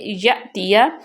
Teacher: یا کے بعد حمزہ پہ جزم ہے تو اس کو جھٹکا دے کے پڑھیں گے